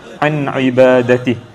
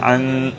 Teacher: huruf nun mati bertemu dengan huruf ain. Bacaan itu juga adalah merujuk kepada hukum izhar halqi. Jadi cara bacaannya adalah jelas · Jadi apabila huruf nun mati ataupun tanwin bertemu dengan salah satu huruf izhar halqi yang 6 ini, maka bacaannya wajib diizharkan tanpa dengung ataupun dibaca dengan jelas tanpa dengung